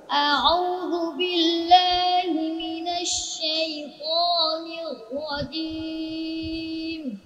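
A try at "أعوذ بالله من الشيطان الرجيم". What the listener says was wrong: তার পড়াটা মানে কি পরিমাণ নাকে ছিল আগে, তাই না? এখন নাক থেকে বের হয়ে গেছে না, মোটামুটি আরো বের হয়ে যাবে, আরো বের হয়ে যাবে। শাইতানির, এতটুকু কিন্তু তোমার একটু একটু নাকে যাচ্ছে।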